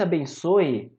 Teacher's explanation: Esse ditongo aqui, ele é anasalado. Se fosse abençoe, repara, não é anasalado